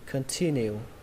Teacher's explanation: Âm thứ hai lên giọng nhé, âm T.